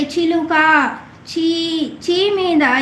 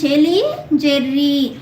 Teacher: ఇ ఈ ఎలం కూడిన చజలు తాలవ్యంబులు